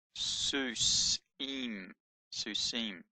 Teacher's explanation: the Vav with the dot in it is being used as a vowel, so it's not a V sound, it's an U sound. So that says Susim, Susim, horses.